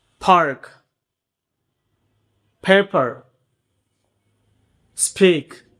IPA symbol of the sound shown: p